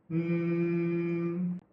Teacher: This sound is simply made by pressing the lips together lightly while making a sound with the vocal cords. So this is a voice consonant. · Because the soft pallet is lowered, air comes up through the nasal passages. These make it a nasal consonant. You can feel the vibration in your nose.